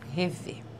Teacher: nós temos uma oxítona que termina em E de som fechado. Oxítona terminada em E leva acento, som fechado, acento circunflexo, certo?